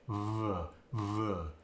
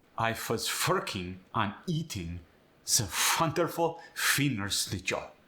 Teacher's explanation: The W becomes a V, but it's kind of a lazy V. The lips and the teeth don't firmly go together like in standard American English.